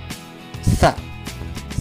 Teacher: sa ini suaranya lebih tipis, ujung lidah dirapatkan dengan gigi atas, ujung lidah kita dirapatkan dengan gigi bagian atas di depan, jadi bunyinya sa. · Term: huruf sa